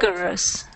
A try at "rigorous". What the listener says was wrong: No, rigorous. With an R. Yes, rigorous.